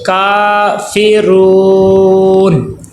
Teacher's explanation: را کو پر کر کے پڑھیں گے کیونکہ را کے اوپر پیش آ گیا ہے۔ کافرون، اب یہاں پہ آیت مکمل ہوگی ہے، وقف کریں گے، ٹھہریں گے۔